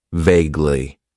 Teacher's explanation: It has two syllables and the stress is on that first syllable.